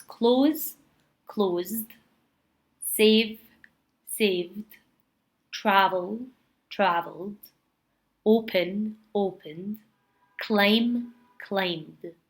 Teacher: So at the end that sounds like a D and without the vowel sound. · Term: the D sound